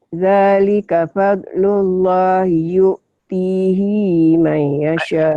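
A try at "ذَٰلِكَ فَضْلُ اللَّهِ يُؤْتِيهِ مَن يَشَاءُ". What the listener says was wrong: Pendek. Yu'tihi may. Hinya pendek. Hinya pendek.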